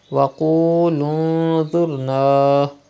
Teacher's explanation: You can see dha after noon sakin, and dha is from ikhfa letters. The rule ikhfa will be done and gunna will be done in noon sakin.